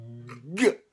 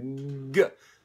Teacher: So it's a voiced sound. Now this is not a fricative, it's a stop, because you're stopping the air and then releasing it all at once in your G.